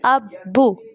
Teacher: پہلے اب اس لیے ہم با کو ہلا رہے ہیں پہلے، کیونکہ با جو ہے وہ حروف قلقلہ میں سے ہے نا، اس کو ہم نے ہلانا بھی ہے، تو یہ ساکن کی حالت میں ہلایا جاتا ہے۔ جب ساکن ہوتا ہے نا با، تو پھر ہم ہلاتے ہیں۔